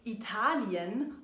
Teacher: Deshalb sagen wir zum Beispiel itali-en und nicht “Italiin”. Denn hier ist die Betonung auf *der* zweiten Silbe ItAlien. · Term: getrennt